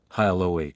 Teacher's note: The H is soft, and the stress is on the second part of the word